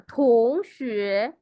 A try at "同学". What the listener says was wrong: কারণ দেখেন আপার টোন দুইটাই আপার টোন না।